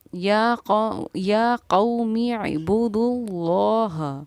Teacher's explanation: ہمارا لفظ اللہ کا لام موٹا یعنی کہ پر پڑھا جائے گا